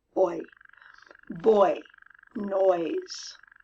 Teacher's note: Starts with an open O and ends with an E. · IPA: /ͻi/